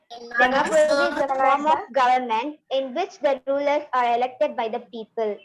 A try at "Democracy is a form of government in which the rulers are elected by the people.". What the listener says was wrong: இன்னும் கொஞ்சம் ஸ்லோவா படிங்க.